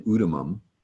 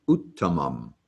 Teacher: two t's together as in utimum like the english word letter you would actually hit the first t slam on the brakes and then proceed with the second t